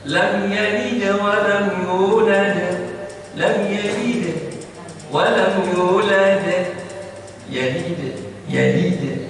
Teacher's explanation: kalau yang di tengah qalqalah sughra namanya itu dia ringan saja mengucapkannya